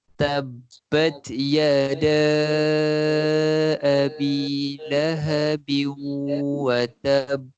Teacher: perkataan yada panjang 4 ataupun 5 harakat